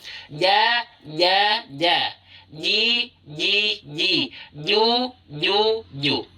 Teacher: Untuk huruf Jim, bagian tengah lidah menempel dan melekat. Menempel erat, ya.